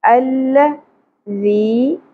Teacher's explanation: ذال نرمی سے ادا ہوگا، بزنگ ساؤنڈ یا سیٹی کی ساؤنڈ نہیں آنی چاہیے